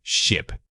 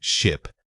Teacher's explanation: Say it quickly and focus on that short clipped I sound. Visualize a tiny quick movement in the middle of your mouth.